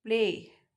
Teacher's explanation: L is partially devoiced after voiceless P